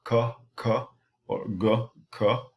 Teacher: So the tongue comes between the teeth, tongue comes in contact with an area here called the alveolar ridge, or the tongue coming in contact with the soft palate